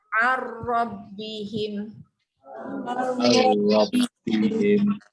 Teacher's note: masuk bunyi ra, tiada dengung